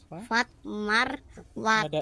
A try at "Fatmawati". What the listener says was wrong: R-nya.